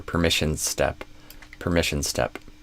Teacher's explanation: And then between permissions and step, you added an extra vowel. You kind of did permissions is step. Whereas I would connect these S's together.